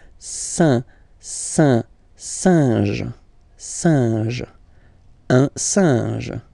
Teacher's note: this combination, EN, so nasal as well, it will go in your nose